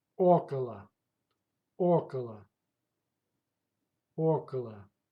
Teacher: Pay attention. The stress goes to first vowel.